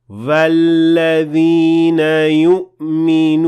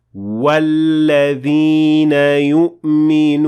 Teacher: when they start with the wa sound, it will have a hint of va sound in it.